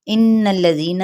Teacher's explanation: یہاں پہ غنہ کیا جائے گا نون مشدد پہ